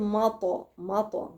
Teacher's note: الميم مرققة والطاء مفخمة مقلقلة